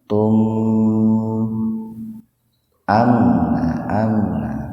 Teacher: Nah, kalau tum idhar syafawi, mim mati ketemu hamzah secara terpisah, jadi mimnya dibaca jelas, idhar jelas, syafawi di bibir, tahan 2 ketukan itu